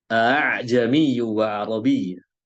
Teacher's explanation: Makhrajnya harusnya di bagian tenggorokan paling bawah. Tapi makhrajnya bercampur dengan huruf yang di atasnya. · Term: Hamzah musahalah